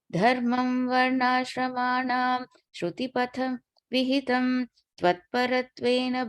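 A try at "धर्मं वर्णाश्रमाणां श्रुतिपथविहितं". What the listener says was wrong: That first line, there's no break between varnashramanam and shrutipata. Okay, that's together.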